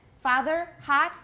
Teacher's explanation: But in American, father, hot, they have the same vowel, ah.